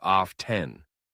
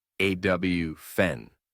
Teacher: You might hear people pronounce the t saying often, but most native speakers say awfen. The t is silent. Both pronunciations are technically correct, but awfn is more common in casual conversation.